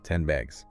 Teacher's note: The n sound changes to a m soundag. Because the next sound b is made with the lips. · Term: assimilation